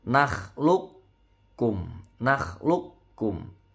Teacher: hurufnya tebal ya kalau disukunkan jadi qolqolah memantul tapi karena ketemu Kaf ini melebur jadi kofnya nggak memantul bacanya itu makhluk bukan makhluk atau makhluk pun bukan tidak mantul · nggak memantul bacanya itu makhluk bukan makhluk atau makhluk pun bukan tidak mantul cukup di tasdid saja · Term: idgham mutaqaribain